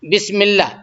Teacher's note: اللہ کے لام سے پہلے میم پہ زیر ہے تو اس کو بھی باریک ہی پڑھیں گے